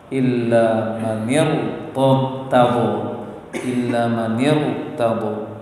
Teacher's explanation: Disambung dengan langsung ke ro, sehingga ro-nya dibaca tebal.